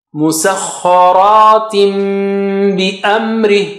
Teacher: صخا, صخا is high sounding, را is thick.